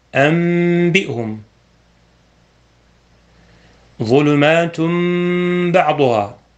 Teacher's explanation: الحكم الثالث القلب، ويقال له الإقلاب، وذلك عند حرف واحد وهو الباء، وإليه أشار رحمه الله بقوله: والقلب عند الباء بغنة. فتقلب النون مع الباء ميما